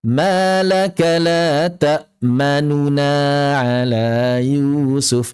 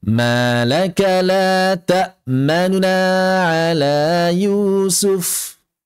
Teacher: Maka yang kami dapatkan dari kebanyakan guru-guru kami adalah mempercepat harakat yang asalnya l takmanuna tidak diidgamkan menjadi lammanna. Namun mengucapkan nun dhammahnya dengan singkat dengan ikhtilas